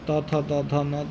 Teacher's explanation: जिन व्यंजनों के उच्चारण में दांतों द्वारा सांस का अवरोध होता है उसको दंत्य व्यंजन कहलाते हैं